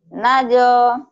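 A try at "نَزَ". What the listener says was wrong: Enggak, bukan panjang, tapi pendek.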